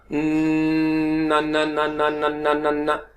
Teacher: यानी पीछे जो सख्त हिस्सा है जबान वहां पे रुक गई, हवा को रोक लिया और नथनों से आवाजें निकलना शुरू हो गई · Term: गुन्ना